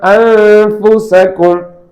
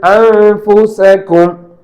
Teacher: நூனுடைய சப்தம் என்பது மூக்கந்தண்டு ஒலி இருக்கும். நாக்கு அடுத்த எழுத்தாக ஃபாவில் இருக்கணும்.